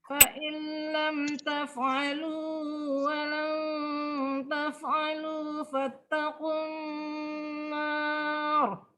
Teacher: idgham bila gunnah masuk tanpa dengung, tanpa ditahan